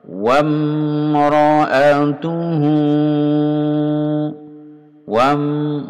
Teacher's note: ini wawunya dibaca pendek langsung sambung mim